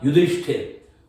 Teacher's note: ये ध में जो ई था, इसके कारण ये जो स आया, ये स जो दंत्य देख रहे हो स्थिर वाला, ये श मूर्धन्य बन गया सर, और इस मूर्धन्य श के कारण आगे जो थ आया इसका ठ बन गया।